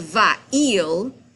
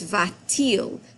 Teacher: Now, when you have this situation where you have a verb that ends in a vowel and your subject begins in a vowel, when you make them switch places, you have to add a T in between because the French don't like the way it sounds without some continuity. So instead of va-il, it's va-t-il.